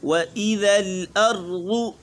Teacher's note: واو باریک، ذال بھی باریک